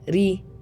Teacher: the ra is light because it has a kasra under it